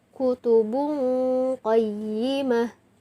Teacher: Nah, di sini ba yang ditanwin atau ba yang didomah tain bertemu dengan huruf qaf. Jadi dibaca samar dan didengungkan